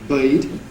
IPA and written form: bɜɪd (bird)